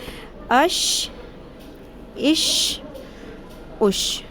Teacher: جب زبان کا درمیانی حصہ اوپر والے تالو کے ساتھ ٹکراتا ہے تو شین ادا ہوتا ہے، شین کی آواز میں شدت ہوتی ہے۔ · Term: شین کا مخرج